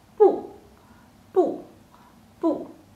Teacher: it's a sharp falling tone